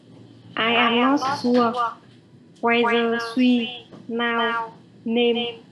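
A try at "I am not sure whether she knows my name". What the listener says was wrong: Từ biết là phát âm là now á. Từ nào là bây giờ chứ có phải là biết đâu. No.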